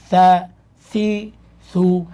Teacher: সি পেশের সময় গুল হয়ে যাবে। সু একদম পরিপূর্ণভাবে গুল হবে।